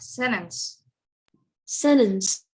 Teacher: The T is not pronounced.